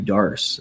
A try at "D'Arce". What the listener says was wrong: Do you know that the word Darce is actually pronounced Diarse? It's the Diarse choke and not the Darce choke, because Joe Diarce's name is not Joe Darce.